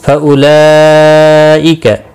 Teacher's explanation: فَأُولَئِكَ، بڑی مد ہے متصل، مد متصل چار الف کے برابر کھینچ کر پڑھیں گے